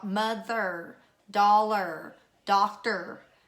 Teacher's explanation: each of these final syllables are gonna be unaccented